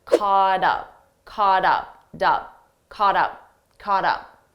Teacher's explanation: Sounds like aught aught caught now because up is a vowel. So now we have caught up, we have a T between 2 vowels. Again, I'll pronounce it as a soft D